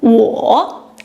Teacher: 我, I or me. Notice the third tone, falling, rising.